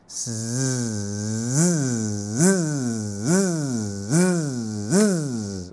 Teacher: s tambah dengan vocal cord punya vocalization dia akan jadi huruf Z